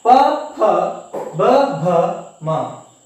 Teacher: ತುಟಿಗಳ ಸಹಾಯದಿಂದ ಈ ಒಂದು ವ್ಯಂಜನಗಳು ಉಚ್ಚಾರ ಆಗುತ್ತೆ. ಆದ್ರಿಂದ ಇವುಗಳನ್ನ ಓಷ್ಠ್ಯ ಅಕ್ಷರಗಳು ಅಂತ ಹೇಳಿ ಕರಿತೇವೆ.